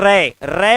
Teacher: र बोलते समय आपकी जीभ समझ लो वाइब्रेशन मोड पर होगी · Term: प्रकंपित